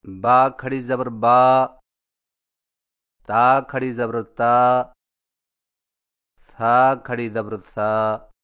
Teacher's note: کھڑا زبر کی ادائیگی، کھڑا زبر حرف کے اوپر کھڑی لکیر کو کھڑا زبر کہتے ہیں، اور کھڑا زبر ہونٹوں کو اوپر کی طرف کھول کر تھوڑا سا کھینچ کر پڑھا جاتا ہے، اور اس کی آواز کا رخ اوپر کی طرف ہوتا ہے